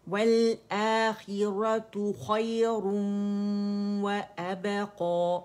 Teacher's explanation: خی موٹا ہے, ٹھیک ہے, اور یا نرمی سے ادا ہوگا